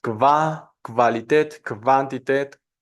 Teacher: Antes tenemos el sonido de una oclusiva velar sorda, entonces vamos a tener kv